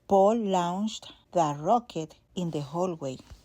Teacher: launched is a short back O, not a long OU